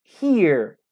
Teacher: eu escuto o som de duas vogais, mas todas elas pertencem à mesma sílaba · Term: diphthongs